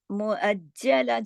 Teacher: جیم کے اندر بھی تشدید ہے، 2 حرف چھپے ہوئے، سختی سے پڑھا جائے گا. اب یہاں دیکھیے لا 2 زبر لن ہے، لیکن 2 زبر کی تنوین پر جب رکتے ہیں، جب عارضی سکون کرتے ہیں تو ایک الف اور ایک زبر کی طرح پڑھا جاتا ہے.